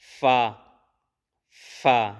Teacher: اوپر کے دانتوں کے کنارے اور نچلے ہونٹ کے تر حصے سے ادا کیے جاتے ہیں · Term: حروف شفویہ